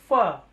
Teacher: फ बोलते समय मेरे दांत और होट टच हो रहे थे · फ बोलते समय मेरे दांत और होठ टच हो रहे थे, तो ऑटोमेटिकली मैं इसको डिस्क्राइब कर पाऊंगा कि ये दंतोष्ठ के अंदर ये चला जाएगा।